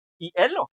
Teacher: O sea que la I y la E suenan rápido, ¿no? no se corta. Por lo tanto, es eh, un diptongo.